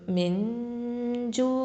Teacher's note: அப்போது ஜீம் இருந்துச்சா என்ன பண்ணணும், எஹ்ஃபா பண்ணணும், மறைச்சு குன்னா செஞ்சு ஓதணும்.